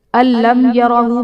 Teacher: میم ساکن کے بعد حرف با اور میم کے علاوہ یا ہے تو یہاں پر اظہار شفوی کا قاعدہ ہوگا، یعنی میم ساکن میں ہم غنہ نہیں کریں گے